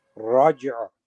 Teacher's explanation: So you do the qalqala of the jim, and as the qalqala is finishing, you bring the sound of the ayn in.